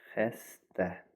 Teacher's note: Ə incə açıq dodaqlanmayan saitdir. · Vurğu ikinci hecaya düşür.